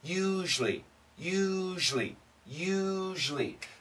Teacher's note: So it's a U and then a zhly, zhly. It's like a Z-H-L-Y, one syllable.